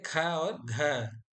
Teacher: ख बोलने में थोड़ा हवा ज्यादा निकल रही है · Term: महाप्राण